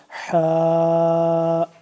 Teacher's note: حا کو ہم نے ہا سے جدا پڑھنا ہے، حا کر کے گلے سے آواز نکالنی ہے، حلق سے